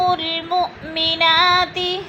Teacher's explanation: وہ حمزہ ساکن ہے، اس کو جھٹکا دے کر پڑھیں گے